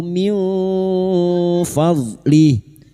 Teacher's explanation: Nallahu min fadlih min fa nun sukun bertemu fa ikfa hakiki. Kita samarkan bunyi nun sukun dan mendengung selama tiga harakat.